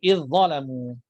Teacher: Zal contoh hujung lidah keluar ya, tu makhraj dia. Kemudian zal ada sifat rakhawah, sifat melepaskan suara, ya, tetapi dha tebal pula, ya, dha sifat rakhawah juga tetapi dalam keadaan isti'la, ya, idh-dhalamu.